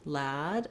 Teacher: If that gives you trouble, focus on starting with your lad syllable where the stress is